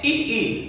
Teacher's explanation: तो जब आप इसका उच्चारण करते हैं तो आप ऐसे भी देखिए, जब आप कहते हैं ई, तो जीभ आप ऊपर की दांत के पहले जो आपका ये तलवा है वहां उस तरफ ऊपर उठती है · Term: तालव्य वर्ण